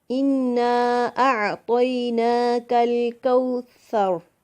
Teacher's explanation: جیسا کہ ہم سورۃ کوثر پڑھتے ہیں، اِنَّا أَعْطَيْنَاكَ الْكَوْثَرَ، کل باریک ہے، کوثر یہ بھی باریک ہے، کاف کوثر کا کاف بھی باریک ہے۔ اس کو تھن پڑھیں گے، موٹا نہیں کریں گے، دونوں میں فرق کریں گے قاف اور کاف میں۔